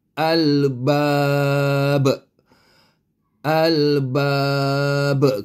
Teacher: [Musik] Albab itu dari segi hukum tajwidnya tapi dari segi sabutan sebutannya mesti ada qalqala sebab ba mati huruf ba mati